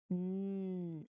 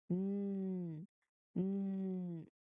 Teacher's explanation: Again, let me remind you that here in letter N, if you try to make the sound of letter N, the tongue, your tongue, it um tongue tip especially, it touches the ridge behind your teeth firmly, which of course block all the air in your mouth. That is why you must feel the sound vibrate only in your nose as well as the air. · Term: voice nasal sound